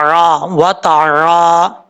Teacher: आइन को अपने मखरज से, हमजा नहीं पढ़ना, आरा वतारा, इस तरीके से।